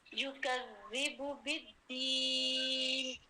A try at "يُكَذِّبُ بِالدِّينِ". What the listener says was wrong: زیادہ مد نہیں لے کر آئے. بالدین زیادہ مد نہیں لے کر آئے.